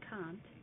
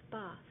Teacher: What I'm talking about in particular is the broad A sound, so that the A's in, for example, can't and bath are produced somewhat lower and further back in the mouth than in standard American English